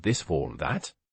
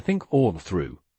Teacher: the tongue position is largely identical. The key difference is vocal cord vibration.